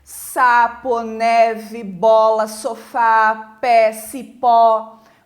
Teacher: abrindo mais a boca para falar então são vogais abertas